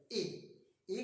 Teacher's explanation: ए का उच्चारण करता हूं तो जीभ का अगला भाग सक्रिय रहता है